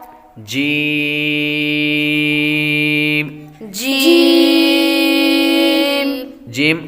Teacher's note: حروف شجریہ میں زبان کے درمیان اور تالو کے درمیان سے